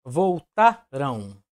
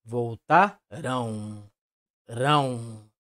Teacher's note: esse som de um esse som anasalado e sabemos também que a letra M proporcionam um som vocálico o som de vogal no caso a vogal u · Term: ditongo nasal decrescente